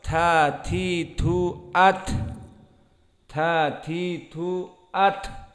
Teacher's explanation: Ada at itu maknanya jarayan nafas, ada nafas yang keluar. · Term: hams